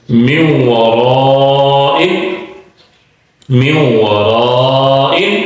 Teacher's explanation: نون کی آواز واو کے اندر شامل ہو گئی۔